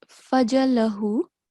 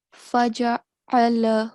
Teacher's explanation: You missed out the ain with the fatha stroke. So it's not fajalahu, faja'alahu.